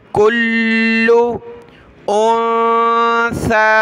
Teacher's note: सा पर हमने ज़बान निकालनी है, नरमी के साथ पढ़ना है. सीटी की आवाज़ हमारे मुंह से नहीं निकलनी चाहिए जिस तरह हम सीन पढ़ते हैं.